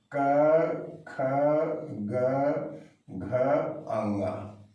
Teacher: कंठ से उच्चारण होने वाली ध्वनियां हैं अ, आ, क वर्ग। क वर्ग से तात्पर्य क, ख, ग, घ, अंगा।